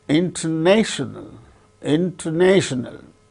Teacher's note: So, the third syllable gains a primary stress, first syllable gains secondary stress.